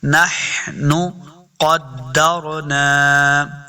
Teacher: یہ جو دو نقطوں والا قاف ہے اس کو ہم نے ہمیشہ موٹا کر کے پڑھنا ہے کیونکہ یہ حروف مستعلیہ سے ہے۔ پھر قاف کو دال کے ساتھ ملانا ہے، دال مشدد ہے۔